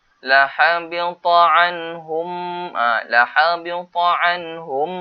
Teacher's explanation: Kenapa dengung? Sebab sini ada mim sabdu. Wajib dengung 2 harakat.